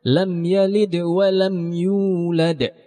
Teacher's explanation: Qalqalahnya tidak terlalu besar ketika mematikan huruf dal. Dal yang pertama, bukan dal yang di ujungnya. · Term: qalqalah sugra